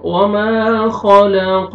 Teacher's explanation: والنہار اذا تجلی، وما خلق الذکر والانثى، الف مدہ، الف سے پہلے فتحہ، میم کو ہم نے کھینچنا ہے۔ وما، خا کو موٹا کر کے پڑھیں گے، حروف مستعلیہ میں سے ہے